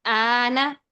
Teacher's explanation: تو اس کو ہم کیسے پڑھیں گے؟ 6 حرکات ہم حمزہ کو لمبا کریں گے اور پھر لام کو ساکن کو ملا کر پھر اس کے بعد حمزہ یہاں پر 2 حرکات جتنا ہے کھڑی زبر الف مدہ قائم مقام، تو اس کو ہم ادا کر دیں گے. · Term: مد لازم کلمی مخفف